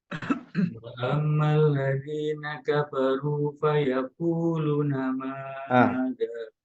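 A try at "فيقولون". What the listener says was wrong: Fayaqulu lu-nya yang panjang. Na-nya sudah betul pendek.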